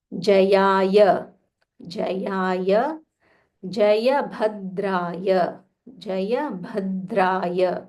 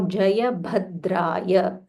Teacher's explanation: This is Mahaprana Bha. So you'll have to aspire little more.